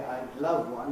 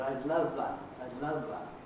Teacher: not having a vw contrast in their language right then they they tend to make the w into a v